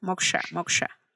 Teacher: El SHA es una retroflexión, ¿verdad? Tienes que girar tu lengua hacia atrás